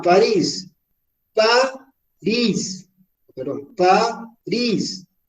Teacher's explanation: Fuerza de entonación en la última.